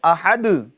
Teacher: تب جب آپ یہ کفواً احد پر رکیں گے تو ہے تو احدن، مگر جب آپ رکیں گے ٹھہریں گے تو یہ دو پیش کی تنوین کو کس سے بدل دیں گے؟ سکون میں یعنی جزم میں بدل دیں گے